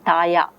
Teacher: The child is saying taya. La is retroflex lateral is replaced by the semi-vowel ya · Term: gliding